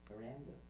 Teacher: So by following the blue, we can find here's my fundamental frequency. I have a peak there at about 140 hertz, and it jiggles, but in a downward direction, and then has this up-down shape around Miranda. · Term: pitch accent